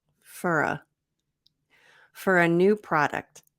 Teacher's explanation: fur so we have a reduction for for to fur and we have connected speech linking with the r to the a